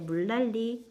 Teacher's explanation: 물난리 리을과 니은이 서로 만나면서 유음화가 일어났죠